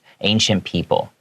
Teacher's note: even though it has a C, it's pronounced more like an SH